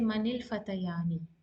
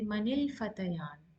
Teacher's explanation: when we pronounce or when we speak or read Arabic, we stop on the noon.